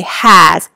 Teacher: has sounds like it has a Z, but it's an S